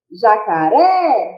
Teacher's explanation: então a gente pode dizer que a última sílaba é a tônica · Qual que eu falei com maior intensidade? O ré. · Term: oxítona, sílaba mais forte